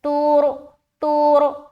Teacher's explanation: تُرْجَعُ الْأُمُورُ، تا را پیش، تور، را کو موٹا رکھ رہے کیونکہ تا کے اوپر پیش ہے